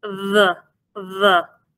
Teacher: Without the Dagesh Lene, it is pronounced as sort of a voiced TH sound.